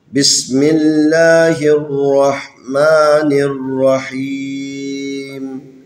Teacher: اس لفظ اللہ کو ترقیق پڑھنا ہے، باریک کر کے پڑھنا ہے، کیونکہ لفظ اللہ سے پہلے میم ہے، میم کے نیچے زیر ہے